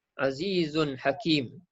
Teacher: Jadi tanwin jumpa dengan ha, izhar halki. Jelas dan terang, kita sebut tanwin tu tidak ada dengung.